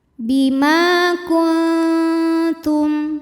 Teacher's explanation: Ma hukumnya adalah mad tabi'i zahiri, sebab ada alif yang sebelumnya berharokat fathah. Cara membacanya dipanjangkan mimnya 2 harokat.